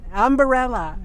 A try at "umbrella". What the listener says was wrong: So you put that extra A in there. It's umbrella. It's not umbrella.